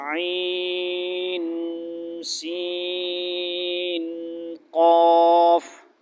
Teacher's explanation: عین سین میں بھی نون ساکن پہ غنہ ہوگا، اخفا